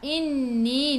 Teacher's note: Inni nun ada sabdu tekan ke dalam nun dan dengan 2 harakat wajibul gunnah